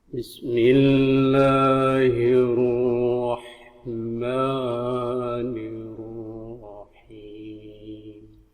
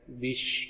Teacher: bisnya tipis ya, dia sin, bukan sya. Dia tanpa titik.